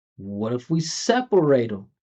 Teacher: there's only one important syllable, set. And the important part is the E, not the S.